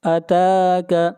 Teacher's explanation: هل اتاک تا کو کھینچ کر پڑھیں گے ایک الف کے برابر